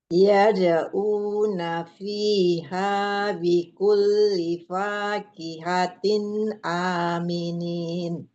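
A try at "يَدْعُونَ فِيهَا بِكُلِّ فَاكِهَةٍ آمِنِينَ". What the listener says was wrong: Nah, di sini pakai angin. Yad'u. Ain ya.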